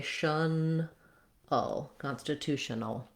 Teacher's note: That L is a syllabic L, meaning there might be a little schwa before it, but basically you're moving right from the N to the L. The L itself counts as the whole syllable without really much of a vowel.